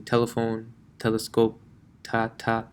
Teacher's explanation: your tongue when pronouncing t actually never touches the teeth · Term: english tea